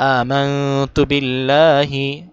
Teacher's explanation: আতে টান দিয়ে, মাং ইখফা করে